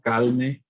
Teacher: El lambdecismo, calne, se asocia con la región del este